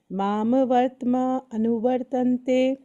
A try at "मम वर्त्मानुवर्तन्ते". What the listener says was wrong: माम नहीं है, मम। मम वर्तमानुवर्तन्ते।